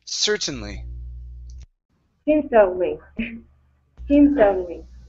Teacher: Okay, this word here, instead of certainly, the word is pronounced certainly. The stress is at the beginning.